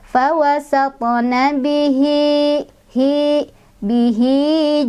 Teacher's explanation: huruf setelahnya ini bukan hamzah tapi jim, maka haknya dibaca panjang 2 harokat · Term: mad silah qasirah